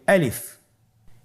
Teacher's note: গলা এবং মুখের শূন্যস্থান হতে আলিফ হরফটি উচ্চারিত হয়।